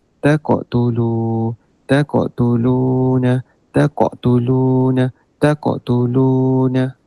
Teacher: dia kena baca dengan tebal Sedikitlah nama dia qalqalah sugra